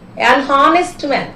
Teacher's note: Actually, H is silent here.